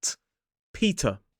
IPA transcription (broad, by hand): ˈpiːtə